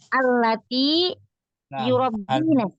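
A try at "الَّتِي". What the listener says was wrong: Allati, panjangkan dikit.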